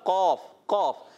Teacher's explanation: قاف جو ہے یہ زبان کی جڑ اور تالو کے نرم حصے سے ادا ہوتا ہے، انہیں حرف لہویہ بھی کہتے ہیں.